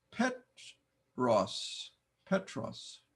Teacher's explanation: not a dipthong so I must make two sounds Petros Petros notice the accent on the first syllable